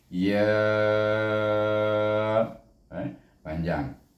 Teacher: Jadi di sini terdapatlah hukum mat jaiz mufassir, di mana kita membaca ya dengan 4 atau 5 harakat